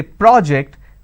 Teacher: When I'm stressing on the first syllable, it becomes a noun.